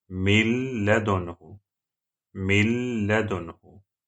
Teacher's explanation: You have to add noon into lam. It will be mil ladunhu. Mil ladunhu. There's no voice of noon. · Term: idgham without Ghunnah